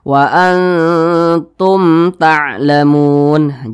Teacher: di sini mim mati bertemu huruf ta, berarti bacanya tidak didengungkan, bacanya jelas. Hukum bacaannya izhar syafawi.